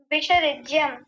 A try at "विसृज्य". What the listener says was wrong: बिंदी है इस पे? बिंदी तो है ही नहीं। विसृज्य। और पहली बार आपने शायद ऐसा बोला था विसृज्य, सृज्य कुछ ऐसा बोला था, ऐसा लगा।